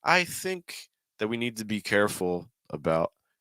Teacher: so the think goes very high